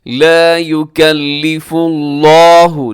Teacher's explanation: لفظ اللہ موٹا رکھیے گا، اس سے پہلے فا کے اوپر پیش ہے